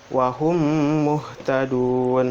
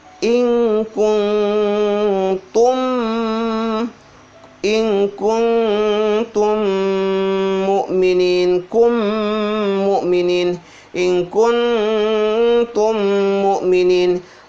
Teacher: huruf mim ketemu dengan huruf mim dibaca dengan guna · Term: idgham mimi